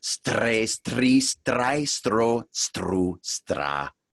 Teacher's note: But you'll notice that you're starting to activate the tongue and the upper palate when you do that. You can put a little more of a trill if you're comfortable doing that on the R.